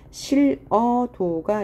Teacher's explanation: 히읗 다음에 모음으로 시작하는 형태소가 올 때는 히읗이 탈락하죠